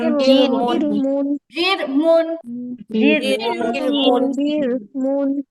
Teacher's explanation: রমোটা হবে না, রমোটা হবে না, পাতলা হবে।